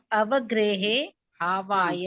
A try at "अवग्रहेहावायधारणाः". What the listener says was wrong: बहुत अच्छे।